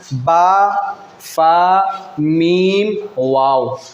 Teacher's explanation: ये 4 हरूफ हैं जिनको हरूफ शफ़विया कहते हैं, जो होंठों से अदा होते हैं। शफ़वी का माना होता है होंठ, यानी होंठों से अदा होने वाले हरूफ।